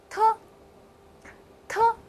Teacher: 特在发音的时候呀，它和的有一点点的相似，不同的是特它是要送气的